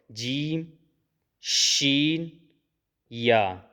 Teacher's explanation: زبان کے درمیان، ٹھیک ہے، اور تالو کے درمیان سے ادا ہو رہے ہیں یہ حروف، جیم، شین، یا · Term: حروف شجریہ